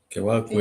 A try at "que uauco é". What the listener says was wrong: Aquela outra sílaba U, parece que já não sai, que uauco é. Que uauco é. Que uauco é, não é?